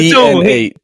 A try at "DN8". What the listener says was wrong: Eights. It sounds like ace, but I'm saying eights. DNA ace. That's what I'm saying. Eights. I'm adding the S on there because there's two. There's more than one.